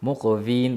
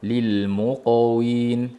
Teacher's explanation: qof yo'g'on, win ingichka va labdan.